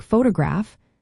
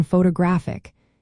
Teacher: In words like photograph, the stress falls on the first syllable, but in photographic, it shifts to the third.